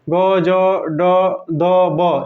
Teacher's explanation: ग, ज, ड, द, ब, ये सब सघोष अल्प प्राण है